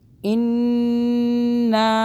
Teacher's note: نون مشدد ہے، اس پہ ہم غنہ کریں گے 2 سیکنڈ کا